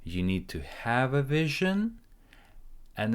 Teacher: at the end the intonation goes a little bit up so that we tell the viewer that we're gonna follow up.